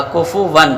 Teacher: اب یہاں پر تنوین کے نون کا ہم اظہار کریں گے